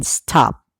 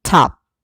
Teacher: in star it is not pronounced like the tea in top the difference in pronunciation lies in the lack of aspiration